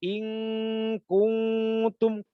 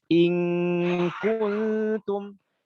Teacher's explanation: Harus baca tipis in kuntum, dibaca tipis, dengungnya dibaca tipis dan dibaca panjang 3 harokat dengungnya